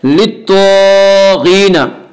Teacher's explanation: त्वा हुरूफ मुस्तालिया में से हुरूफ मुस्तालिया 7 हैं जो हमेशा हर हाल में पुर पढ़े जाते हैं। और गैन भी हुरूफ मुस्तालिया में से गैन को भी पुर पढ़ेंगे।